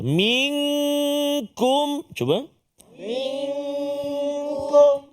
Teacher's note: bertemu dengan kaf, maka nama dia ikhfa hakiki. Dengung dua harakat bacaan kita